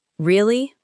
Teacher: You could say, Really? with a calm, falling tone to show that you are processing the news.